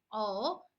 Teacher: कंठ और ओष्ठ है दीर्घ स्वर है और संयुक्त द्विस्वर इसे कहा जाता है। यह जो तालिका आपको दी गई है इससे आप देखकर समझ सकते हैं कि इसके स्वर क्या है?